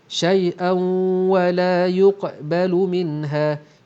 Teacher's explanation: Okey, di sini adanya tanwin berjumpa dengan waw, hukum idgham ma'al gunnah, didengungkan dengan dua harakat.